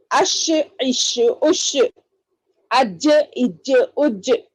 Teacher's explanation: جیم وسط زبان کے درمیانی والا حصہ اوپر بالمقابل تالو کو لگانے سے جیم شین یا ادا ہوتے ہیں